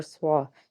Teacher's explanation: लाम वाव पेश लू, वाव साकिन से पीछे पेश है, एक अलिफ के बराबर खींचेंगे, नून ज़बर ना, हमज़ा ज़बर आ, स्वाद अलिफ ज़बर स्वा, स्वाद हरूफ़े मुस्तालिया का हर्फ पुर पड़ेंगे, अलिफ से पीछे ज़बर है इसलिए इसको खींच के अदा करेंगे।